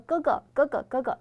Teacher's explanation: 中文当中这个▁g▁它是不振动这个声带的